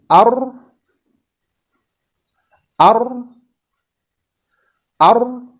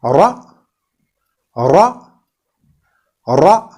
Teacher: while articulating Ra, the tip of our tongue is a little bit twisted upwards. So we use some back of our tongue here for the articulation of letter Ra.